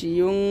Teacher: নাকের ভিতর থেকে এখানে গুণাটা আদায় হবে, এখানে অনুস্বরের মতো গুণাটা করবেন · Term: ইকফা গুণ